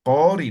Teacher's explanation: O sea, la vocal U vamos a cambiar como si fuera vocal O